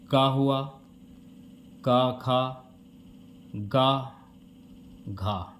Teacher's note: क का उच्चारण स्थान है कंठ · ये आपके कंठ से बोले जाने वाले उच्चारण हैं